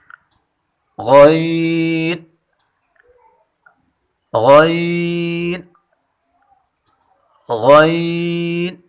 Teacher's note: غین کی مخرج ادنا حلق یعنی جو پہلے ہم مخرج پڑھ چکے ہیں خا حرف کی، وہی مخرج غین کی ہے، اور یہ دونوں حرف پر پڑھے جاتے ہیں۔